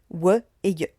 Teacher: Les liquides, où l'air s'échappe sur les côtés, re, le, et enfin les approximantes où l'air s'échappe tellement qu'elles sont presque des voyelles